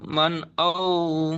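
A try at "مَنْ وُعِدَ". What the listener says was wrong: মান নয়, মান, মিম নুন যাবার মান, এখানে নুনটা উচ্চারণ হবে না তো, মিমটা গিয়ে তো ওয়াও এর সাথে মেলাচ্ছি, ওয়াও। তাহলে মিম ওয়াও জাবার মাউ, ওয়াও পেশ উ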